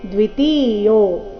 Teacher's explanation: ತಿ ಮತ್ತೆ ಯೋ ಎರಡನ್ನೂ ದೀರ್ಘ ಹಾಡಬೇಕು